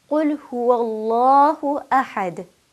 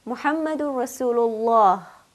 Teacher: I'm sure you could hear the heaviness of the lam coming through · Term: lam tafkhim